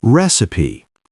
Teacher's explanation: Recipe has 3 syllables, and we stress the first one, recipe.